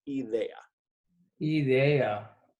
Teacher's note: So idea, the I is pronounced E in Spanish.